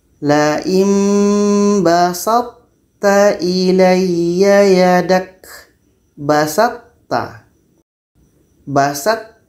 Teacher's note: terdengar lagi tapi masih ada sifat lain daripada th yaitunya itbak itbak ini lidah kita terangkat ke langit-langit